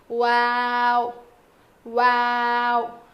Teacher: دونوں ہونٹوں کو نہ ملانے سے واو ادا ہوتا ہے. دونوں ہونٹوں کے نہ ملانے سے واو ادا ہوتا ہے.